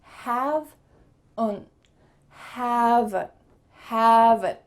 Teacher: We added a little schwa sound.